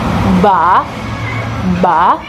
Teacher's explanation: if we want to say ba, you can feel the vibration. That's why it's called voiced sound.